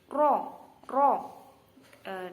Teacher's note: Jadi makhrajnya ro ini ujung lidah agak ke dalam mengenai gusi gigi depan atas. Ro, ro. Dan cara pelafalannya juga harus dibaca tebal karena ro ini adalah salah satu huruf istifham.